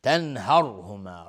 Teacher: را ساکن قبلش فتحه اومده حکمش استعلاست